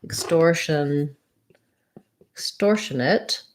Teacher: extortionate is just the same as extortion and then we just add the schwa